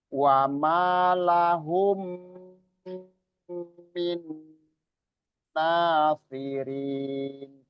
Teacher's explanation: Mim ketemu mim itu idgham mimi tadi ya. Idgham mimi. Jadi double mim. Harus gunnah.